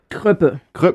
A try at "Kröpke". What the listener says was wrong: Kröpke, das ist ein K noch.